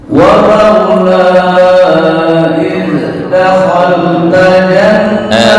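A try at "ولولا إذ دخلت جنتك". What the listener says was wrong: Sebentar, untuk zal jangan qalqalah. Makhrajnya udah betul, tapi jangan dipantulan, bukan dakhal, enggak, itu yang kurang pas. Walaula dakhalta dakhalta.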